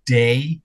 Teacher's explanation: for example, day, that is a diphthong in the face set